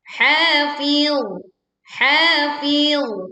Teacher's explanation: Perhatikan huruf dha ketika berwakaf tidak memantul suaranya, tapi alirkan suaranya karena huruf dha bukan huruf qalqalah.